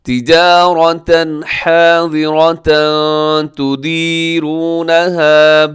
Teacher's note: یہاں پہ اخفا ہو رہا ہے، آواز کو ناک میں چھپائیے گا